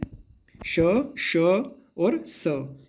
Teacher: जब भी हम इनको उच्चारण करते हैं तो हमारे मुख से वायु घसीट के बाहर निकलती है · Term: संघर्षी व्यंजन